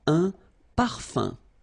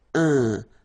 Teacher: So it's nasal and it's un. So it really goes in your nose. You don't pronounce the M at all.